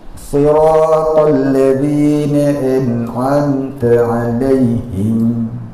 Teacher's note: Ta zal dengan ta juga, hujung lidah kena hujung gigi.